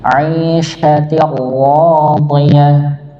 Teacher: ra-nya tebal, huruf dha-nya juga tebal, bukan dibaca 'ishatin radiyah tapi 'ishatin radiyah, radi, bukan radi, radiyah, tapi radiyah.